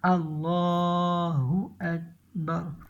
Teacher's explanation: یہ لفظ اللہ کا جو لام ہے نا، لفظ اللہ جب آئے اس کا لام ہے نا، اس سے پہلے جب زبر اور پیش آئے تو اس کو پر پڑھتے ہیں، موٹی آواز سے پڑھتے ہیں